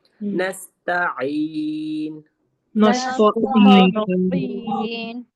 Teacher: تو کو موٹا نہیں کریں گے, عین کو ہم حلق کے درمیانی حصے سے ادا کریں گے